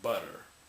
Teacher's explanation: it's like r, but it's with one flap, just one ra. And this is not r, it's r, because r in IPA would be written, hold on, like this.